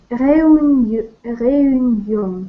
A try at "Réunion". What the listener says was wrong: Да, то есть как бы эю. Сделайте такой вот эю вместе. Эю. Реюньон. Так, как бы не делите реюньон, а вместе. Реюньон. Ну, сделать ударение на первое.